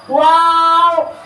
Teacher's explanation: واو دونوں ہونٹوں کی گولائی سے ادا ہوتا ہے